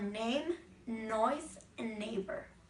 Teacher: This sound is created by blocking the air from leaving the mouth by pressing the tip against the tooth ridge and the sides of the front of the tongue against the side teeth. The soft palate drops, allowing air to pass out through the nose. The sound is voiced, so the vocal cords vibrate while producing it. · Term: n sound